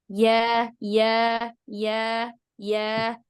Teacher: Tengah lidah membentur langit-langit atas ya. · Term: huruf ya